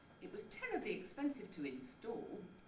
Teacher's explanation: each successive accent jumps up a little bit in pitch and reestablishes the point from which the fall starts